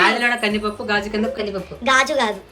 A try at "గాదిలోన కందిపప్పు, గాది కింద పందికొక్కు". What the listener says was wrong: గాజు కాదు మళ్ళీ చెప్పు.